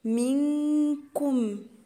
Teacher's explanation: نون ساكنة وجاية وراها كاف يبقى غنة اخفاء